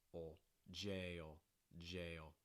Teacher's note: So it's not jails, it's jails. But it's a slight ol sound with the front of your tongue down and your mouth mostly closed